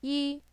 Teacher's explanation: That's a high flat tone. In Mandarin, this is the first tone.